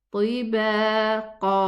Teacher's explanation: 2 counts for the alif and 2 counts for, instead of the tanween with a fathatain, we have 2 counts also. We don't stop on a sukoon qaf. No, we stop on a sukoon alif. طباقا. And the ta is elevated, so the ghunna of the ikhfa is also going to be elevated, and the qaf also is elevated.